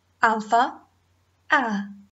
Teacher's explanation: in Greek the Alpha has only one sound the AH as in father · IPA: [α]